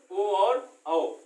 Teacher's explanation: कंठ और होंठ, मतलब कंठ से भी आवाज निकले और होंठ भी हमारे कंपन करें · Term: कंठ प्लस होंठ